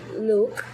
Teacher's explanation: it's made without a puff of air at the end of word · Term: not aspirate sound